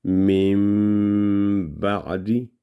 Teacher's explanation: میم کے بعد آگے با آ گیا تو میم کی آواز لمبی ہوگی 2 سیکنڈ